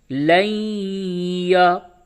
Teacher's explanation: نون ساکن کے بعد حروف یرملون میں سے یا آیا، ادغام مع الغنہ ہوگا